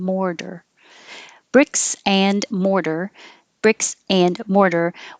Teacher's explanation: The T changes to a D because it's between two voiced sounds.